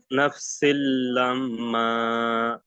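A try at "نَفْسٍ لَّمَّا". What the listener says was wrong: মাশাআল্লাহ, মাশাআল্লাহ, খুব সুন্দর হয়েছে।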